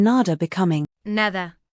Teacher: Finally, one subtle but important phonetic detail is the pronunciation of D between vowels. In both dialects, it tends to soften to De, like in nada becoming, nada.